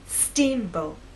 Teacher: think about making the first part at a higher pitch so our voice will be higher at the beginning and lower in the second part